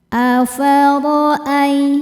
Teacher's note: Huruf ra dibaca secara tafkhim karena berharokat di atas yaitu harokat fathah. Cara bacanya ditebalkan. Afara'ai. Ai ada huruf lin karena ada ya sukun yang sebelumnya berharokat fathah.